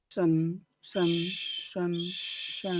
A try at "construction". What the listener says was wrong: shun. Make the whistling sound. Shun, shun. Construction. Shun. Don't forget to whistle. Sh.